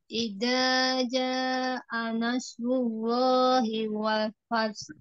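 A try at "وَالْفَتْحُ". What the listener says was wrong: Walfat, gitu Jangan lepas ya. Walfat, tertahan tak. Ini tertahan dulu suaranya ya. Walfat, baru ngalir. Jangan fat ya. Ada ha sukun. Itu dibaca juga ha sukunnya. Walfat. walfat, kalau walfat ini berarti huruf ta-nya ini suaranya yang mengalir bukan nafas, ya. Sedangkan untuk huruf ta ini tidak ada aliran suara, dia tertahan aliran suaranya, ya. Dia yang mengalir itu nafas. At, at.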